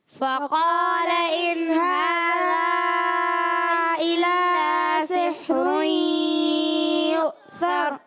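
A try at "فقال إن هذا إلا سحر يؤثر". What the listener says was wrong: اچھا, بعض بچے, ایک بچے نے زبان نکالا یو سر, اتنی زبان نہیں نکالنی, یو سر نہیں کرنا, یو سر, تھوڑی زبان باہر آ جائے کوئی مسئلہ نہیں. یو سر, یو سر.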